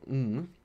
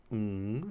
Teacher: All nasals are voiced. Ng. You can feel it in your throat. Ng. So this is a voiced velar nasal stop.